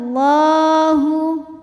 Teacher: lam jalalah dibunyikan secara tafkhim sebab harakat huruf sebelumnya fathah maka cara bacanya lam ditebalkan